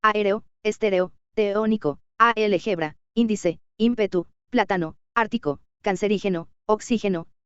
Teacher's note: Esdrújulas, la mayor fuerza de voz sobre la antepenúltima sílaba